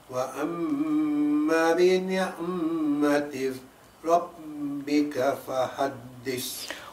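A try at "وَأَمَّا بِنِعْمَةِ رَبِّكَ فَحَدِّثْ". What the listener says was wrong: Wa amma long there. Bi ni'mati rabbika fahaddith.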